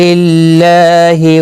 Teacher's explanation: اللہ کا لام زیر کی وجہ سے باریک پڑھا جائے گا، اس کے اوپر کھڑی زبر بھی ہے، ایک الف کی مقدار کے برابر کھینچ کر پڑھیں گے۔